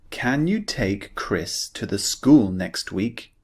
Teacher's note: we're looking at the C sound. Remember, this is the unvoiced sound.